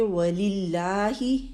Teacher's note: یہ لام باریک اللہ کا پڑھا جائے گا کیونکہ اس سے پہلے لام کے نیچے زیر ہے تو یہ لام باریک پڑھا جائے گا.